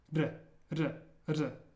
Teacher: this sound one way to get around it is you can try to say like a D sound where you're almost tapping your tongue against the roof of your mouth